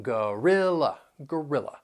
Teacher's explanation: These words have 3 syllables. That first and third syllable, you'll hear that schwa sound, and the stress is on the second syllable.